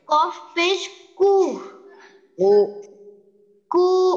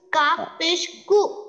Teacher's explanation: কাফ থেকে একটু ডিপে হ্যাঁ কফটা একটু ডিপে হবে